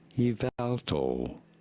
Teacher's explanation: You do want to stress on the second syllable, on the vowel syllable.